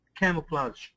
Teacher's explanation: And this G is actually like a ZH.